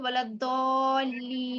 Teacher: جی نون پر جو زبر ہے وہ ختم ہو جائے گا اور نون پر ہم رکیں گے تو بولا دولین، اس طرح پڑھیں گے۔